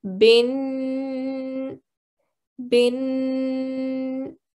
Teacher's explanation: we will give it a two second nasal sound so we're gonna say bin bin okay two seconds down there · just like any tanween, we will give it a 2 second nasal sound.